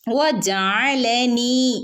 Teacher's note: നൂനിന്റെ കൂടെ യ മദ് വന്നിട്ടുണ്ട് രണ്ടനക്ക് നീട്ടി കൊടുക്കാട്ടോ